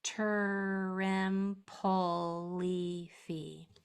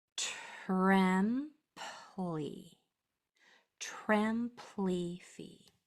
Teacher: You heard more of that voiceless t than you did of the R. You heard more of the voiceless p than you did of the L. That is so it doesn't turn into a whole nother syllable. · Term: TR consonant blend